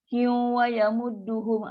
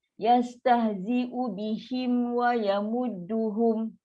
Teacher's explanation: Dia mesti tutup mulut dulu sebab ni ada mim. Settlekan dia walaupun duduk setempat, tetap mim sifat mim, waw sifat waw.